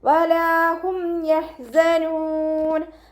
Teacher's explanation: ഹ മഖ്റജ് വരുന്നത് വസത്തുൽ ഹൽക്കാണ്. തൊണ്ടയുടെ മധ്യഭാഗം സൗണ്ടിനെ വ്യക്തമാക്കിയിട്ട് ഉച്ചരിക്കുക കേട്ടോ. ഹ എന്നുള്ള സൗണ്ട് തന്നെ കൊടുക്കാൻ ശ്രദ്ധിക്കുക. · മീം സാക്കിനയ്ക്ക് ശേഷം ബാവും മീമും അല്ലാത്ത ഏതൊരക്ഷരം വന്നു കഴിഞ്ഞാലും മീം സാക്കിനയെ വ്യക്തമാക്കി മണിക്കാതെ ഉച്ചരിക്കുക